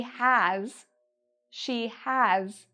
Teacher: So we have with a V sound or has with a Z sound at the end. Even though it has an S, we pronounce it like a Z.